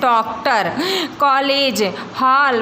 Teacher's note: कुछ शब्द जैसे डॉक्टर, कॉलेज, हॉल, बाल आदि में आ ध्वनि पाई जाती है। यह ध्वनि बड़ा आ और ओ के बीच की ध्वनि है।